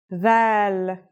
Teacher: it's pronounced with the tongue between the upper and the lower teeth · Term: voiced sound